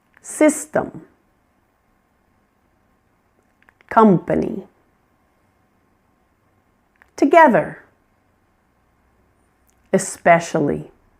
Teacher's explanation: Notice how the vowel is pronounced in these weak syllables. It's quiet. It's unclear. That's the schwah around system, company, together, especially.